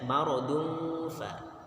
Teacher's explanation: Yang benar maradun kan bunyinya 2 harokat. Artinya ikhfa itu samar, tanwinnya samar kepada huruf fa.